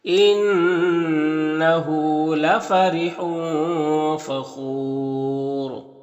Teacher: خو حروف مستعلیہ میں سے پر پڑھیں گے، یہاں پر واو مدہ ہے اور یہاں پر وقف کریں گے تو یہ پیش سکون سے بدل جائے گا، تو پھر را کو پر پڑھیں گے اور مد عارض وقفی ہوگا، تو اس طرح سے پڑھیں گے۔